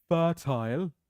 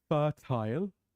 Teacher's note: R is silent we do not pronounce the R